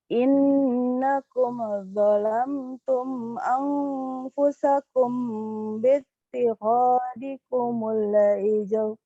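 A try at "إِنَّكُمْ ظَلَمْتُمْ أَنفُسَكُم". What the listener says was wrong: Oke, alhamdulillah sudah bagus Ibu pada huruf-huruf yang ditahannya ya, pada huruf yang berwarna ditahan sudah sangat baik. Cuman catatannya hati-hati, ada mim sukun ini kalau dia dibaca jelas atau dibaca idhar sering ada pantulan nih, hati-hati. Jangan innakum kum, hati-hati, tapi langsung kumlo. Innakum zalamtum, begitu. Yang lainnya insya Allah sudah sangat baik.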